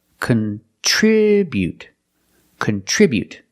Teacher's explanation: we put the stress on the second syllable contribute contribute the first syllable is not stressed so we make